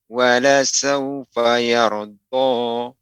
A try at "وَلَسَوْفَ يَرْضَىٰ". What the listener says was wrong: Ya, wawnya lebih ditampakkan Bapak. Walasaufa yarda.